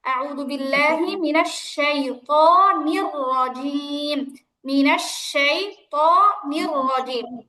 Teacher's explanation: এই নির বলার সময় থেকে রটা মোটা করে বলতে হবে। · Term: র মোটা